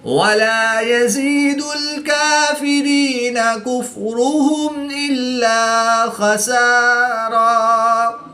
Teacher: میم ساکن کے بعد حرف با اور میم کے علاوہ حرف حمزہ ہے تو یہاں پر میم ساکن میں اظہار شفوی ہوگا، غنہ نہیں کریں گے بلکہ میم ساکن کو ظاہر کر کے پڑھیں گے